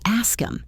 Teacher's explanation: The h is gone.